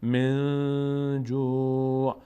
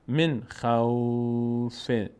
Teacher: نون رو همونجوری که هست ادا میکنیم و سریع رد هم میشیم، روش وای نمیست. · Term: ظاهره